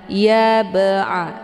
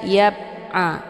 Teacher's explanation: Ya ba'a, ada ba' sukun yang terdapat di pertengahan kalimat, ini dinamakan dengan qalqalah sughra. Cara bacanya, huruf ba-nya dipantulkan dengan pantulan ringan. Ya ba'a, keluar bunyi ba sekedar saja.